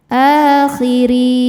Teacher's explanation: Huruf ro dibaca secara tarqik karena harakatnya di bawah yaitu harakat kasrah. Cara bacanya ditipiskan.